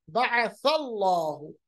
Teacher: अल्लाह से पहले जबर तो लाम जलाला पुर होगा